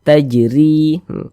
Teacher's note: Huruf ro mempunyai kasrah harakat, sehingga dibaca tipis-tipis, dibaca tarqiq: “tajri.” Kemudian, "ri" dibaca panjang. · Tajri, huruf ra kalau memiliki harokat kasrah, ini baris satu di bawah huruf ini namanya harokat kasrah atau tanda baca kasrah atau baris kasrah. Huruf ra memiliki harokat kasrah, dibaca tipis, baca tarkik. Tajri. Kemudian ri dibaca panjang.